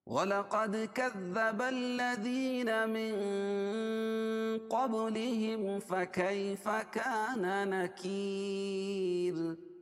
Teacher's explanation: نکیر یا مدہ، یا ساکن سے پہلے کاف کے نیچے زیر ہے یا مدہ. اور را باریک ہوگی کیونکہ را ساکن ما قبل یا ساکن ہے، تو را ہر حال میں باریک ہوگی